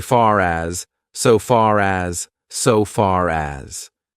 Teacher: So you would think, okay, American English, we say far. We don't pronounce the R, but actually, we do if the next word starts with a vowel. We pronounce it because we need to link those two words together, and it's very hard to say far as.